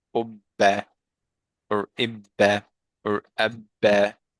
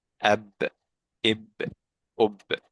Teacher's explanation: But again, for sukun, when it comes to what was one of the qalqala letters, it makes like the qalqala an echo without it like adding a vowel.